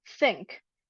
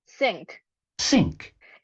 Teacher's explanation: the spectrogram is very dark at the upper part indicating the existence of strong turbulence during the pronunciation of the sibilant